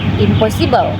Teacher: Eh that example eh the first example is in plus possible impossible here the sound and change to m because it come before p both m and p are made with the lips so it's easier to say impossible than impossible in plus legal illegal in case the sound and change to L because it's followed by L. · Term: assimilation